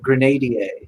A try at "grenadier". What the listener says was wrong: He was pronouncing it in French. You pronounced the wrong syllable. The syllable.